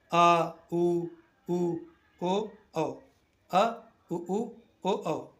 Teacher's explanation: पश्च स्वर जीभ का पिछला भाग सक्रिय होता है